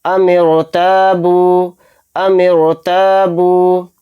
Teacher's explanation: نیچے جو زیر ہے اس کو زیر اصلی نہیں کہیں گے، یہ زیر عارضی ہے، تو اس لیے یہ رائے ساکنہ موٹا پڑھا جائے گا، باریک نہیں پڑھا جائے گا